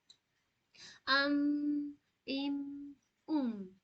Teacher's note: मीम होती है ऊपर की होंठ और नीचे की होंठ की खुश्क हिस्से से। ओके, खुश्क यानी सूखा हिस्सा, ड्राई पार्ट ऑफ लिप।